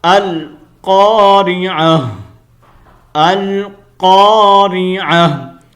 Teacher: اب ہم یہاں پر جب سٹاپ کریں گے، آپ کو پتا ہے کہ سٹاپ آ گیا، جب ہم سٹاپ کریں گے تو اس تا کو ہم نے گول ہا سے بدل دینا ہے